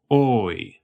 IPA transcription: oɪ̯